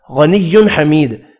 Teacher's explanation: غنی حمید، تنوین کا اظہار ہوگا، غین پر پڑھیں گے، یا مدہ کو 1 الف کی مقدار میں کھینچ کر پڑھنا ہے، دال ساکن پڑھا جائے گا وف کی صورت میں اور دال ساکن پر قلقلہ بھی کریں گے